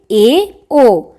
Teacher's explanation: आधा आधा यानी कि इसमें कुछ मुंह खुला हुआ दिखेगा आपको वे स्वर जिनके उच्चारण में मुख आधा बंद रहता है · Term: अर्ध संवृत स्वर